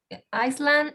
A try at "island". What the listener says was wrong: Be careful with the pronunciation of this word. This word is pronounced island without S. Because there is another word that there is Iceland. Iceland, but that is a country. So the other one doesn't take an S. I mean, you write, but you don't pronounce it, right?